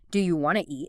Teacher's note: Sometimes sounds are dropped entirely, like the T often disappears in want to.